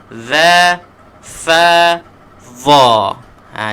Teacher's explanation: Dia semua hujung lidah kita kena keluarkan di antara dua gigi depan.